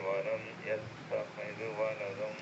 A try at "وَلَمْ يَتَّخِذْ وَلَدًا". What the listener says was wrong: അവിടെ അങ്ങനെ തന്നെ യത്തഖിദ് എന്ന് വേണ്ട, എന്നുള്ള ഉച്ചാരണം ദാലിനില്ല, സ്വന്തമായി സുക്കൂൻ ചെയ്യാൻ പറ്റില്ല, കൽക്കലത്തില്ല. വലം യത്തഖിദ് എന്നാക്കണ്ട. يتخذ خاء അല്ല, അത് ഖാ അല്ലേ, കനമുള്ള ഖാ. യത്തഖി.